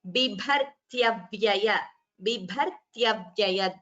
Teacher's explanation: The second bha is Mahaprana.